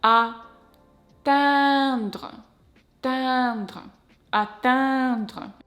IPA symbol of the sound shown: ɛ̃